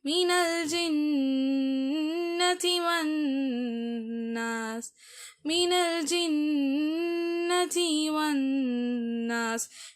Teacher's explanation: ஜின்னத்திக்கு நீங்கள் என்ன செய்யணும்னா நல்லா குன்னா கொடுக்கணும்.